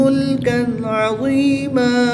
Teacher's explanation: غنہ نہیں کریں گے بلکہ تنوین کو خوب ظاہر کر کے پڑھیں گے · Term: اظہار